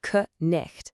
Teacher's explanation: Back in the day, the word for night was knicht. That C at the beginning was a hard K sound, and that H was a throaty sound you made in the back of your throat.